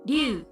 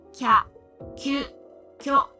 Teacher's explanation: they are pronounced by gliding to the Y sound and not pronouncing the E sound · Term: digraphs